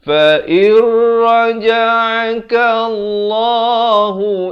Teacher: Fa'ir di sini idgham bila gunnah. Daripada fa'in raja'akallah jadi fa'ir terus masuk tanpa dengung.